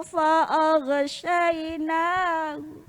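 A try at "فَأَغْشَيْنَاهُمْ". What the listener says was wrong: Jadi jangan fa'aghsha. fa'aghsha, fa'aghsha. Jangan sampai tadi mantul, tadi sedikit mantul. Fa'aghshayna, fa'aghshayna.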